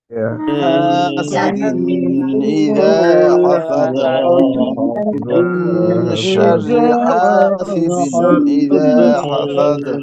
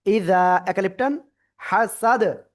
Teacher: তানবিনের পরে ইজারের উপর হামজা আসছে, এজন্য আমরা স্পষ্ট করে পড়বো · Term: স্পষ্ট করে পড়তে হবে